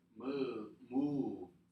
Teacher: Now, when you say the word move, keep your lips forward for oo. Then your lower lip touches your upper teeth, but not that much. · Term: V sound